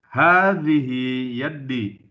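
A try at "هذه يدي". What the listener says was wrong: Naam, yadi. Tidak pakai tasydid ya. Hadhihi yadi.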